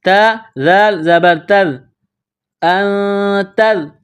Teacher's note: حروف اخفا ہے تو یہاں غنہ کرنا ہے، آواز ناک میں چھپانی ہے